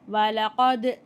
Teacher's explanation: இங்கே தால் சுக்கூன் கல்கலா அசைச்சு உச்சரித்து ஓதணும்.